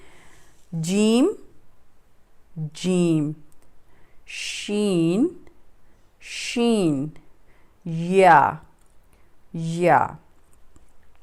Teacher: آپ کی جو زبان کا وسط زبان ہے وہ بالمقابل اوپر کے تالو سے ٹچ ہو رہا ہے. تو یہاں سے جیم شین اور یا ادا ہوتے ہیں. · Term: حروف شجریہ